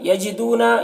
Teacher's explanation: یجدون، یہاں پر واو مدہ ہے، اسے ایک الف کے برابر کھینچیں گے۔